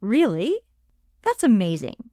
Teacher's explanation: Your pitch rises sharply and quickly. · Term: excitement/surprise